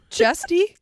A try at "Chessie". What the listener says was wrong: Jessie. Chessie, not with a T. Like Jessie, but Chessie.